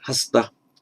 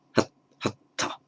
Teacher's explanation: And just a little aside for Pali, as very often happens, where you get an S followed by a consonant in Pali, what will happen is that the S will drop, you'll double that consonant and make it aspirate